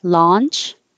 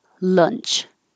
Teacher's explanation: the vowel is ah so the jaw is very open the tongue is flat